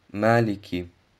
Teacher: Das Kaf wird ausgesprochen, indem die Zungenwurzel mit dem weichen Gaumen in Berührung kommt.